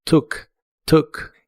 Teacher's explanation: La doble o se pronuncia como una u corta y explosiva